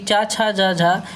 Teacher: चा छा जा झा व्यंजन ध्वनियाँ तालव्य स्पर्शी हैं। आधुनिक परिभाषिक शब्दावली में स्पर्श संघर्षी व्यंजन के नाम से पुकारते हैं।